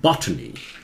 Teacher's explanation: लेकिन बॉट जोर से बोलना है, बॉटनी, बोटानी नहीं